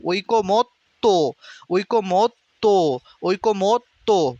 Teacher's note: ত এর পরে যে অটা সেটা কিন্তু উচ্চারিত হচ্ছে না এজন্য ত এর নিচে হসন্ত ঐক মত তৈক মত ত ঐক্যমত